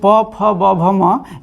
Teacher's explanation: प फ ब भ म, ये सब ओष्ठ से बोला जाता है।